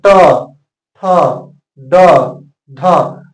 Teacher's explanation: होता है मुर्धा और मुर्धा होता है ठीक तालू के पीछे जैसे ही आप बोलेंगे ट ठ ड ढ आपका जीव जो है सीधा मुड़ जाएगा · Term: ट वर्ग